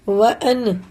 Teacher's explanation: وَأَن، دیکھیے اظہار کا قاعدہ ہے، کیونکہ نون ساکن کے بعد الف آ رہا ہے، اس کو ظاہر کریں گے، جس طرح سے پڑھتے ہیں ویسے ہی پڑھیں گے۔